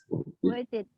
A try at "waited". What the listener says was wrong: T-nya samar. T-nya samar-samar.